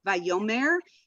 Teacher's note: the accent is on the yo, very important.